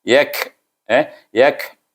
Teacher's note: Sebab apa ada bunyi angin? Sebab dia hamas. Kaf itu hamas.